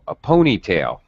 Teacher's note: All right, so this is a compound noun. So we use compound stress pitch pattern. A, a ponytail, and tail is very low.